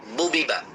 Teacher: এই বা অক্ষরটি উচ্চারণ হয় কোথা থেকে? বা অক্ষরটি উচ্চারণ হয় দুই ঠোঁট থেকে, দুই ঠোঁট থেকে।